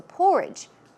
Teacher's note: porridge, stress goes on the first syllable